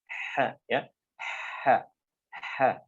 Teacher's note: pada saat dia berharokat, fathah, kasrah ataupun dhammah, maka akan lebih dulu keluar udara dibandingkan suaranya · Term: huruf H